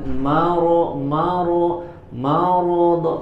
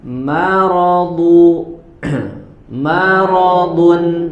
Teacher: Maka Di sini ada 3 huruf, ya, di mana 2 huruf terakhir itu adalah huruf tebal, ro, do. Maka huruf mim, ya, di awal kata, di awal kalimatnya harus dibaca dengan tipis, ya, jangan maro, do, harus jelas dulu, baru ro dan do-nya dibaca tebal. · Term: Mimnya tipis